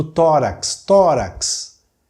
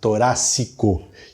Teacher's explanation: O tórax, aquele som de KS produzido pelo X, nós vamos transformar num som de S, torácico.